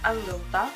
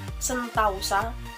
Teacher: Perubahan itu terjadi pada bunyi vokal tunggal O ke vokal rangkap AU, tetapi tetap dalam pengucapan satu bunyi puncak. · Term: diftongisasi